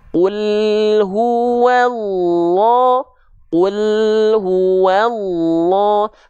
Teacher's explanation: Nah, ketika lidah kita turun, makhraj huruf lamnya turun, itu kalau dia tidak langsung disabet dengan huruf berikut setelah lam sukunnya, yaitu contohnya kulhu, hu-nya langsung masuk ketika al-nya sudah tuntas. Jangan sampai lidahnya turun, kul, ketika turun, kul, sedangkan hu-nya belum dilafalkan.